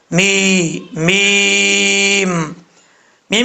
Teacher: میم کا مخرج ہے، دونوں ہونٹوں کی خشکی والا حصہ ملے گا تو میم پڑھا جائے گا